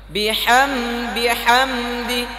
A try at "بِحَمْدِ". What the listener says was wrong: আপনি বলছেন বিহামদি বিহামদি ভিতরে পড়ে গেছে, স্পষ্ট করেন আবার।